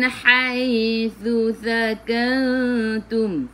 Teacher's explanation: Jadi ikhfa hakiki dengung bawa ke sisi huruf ta.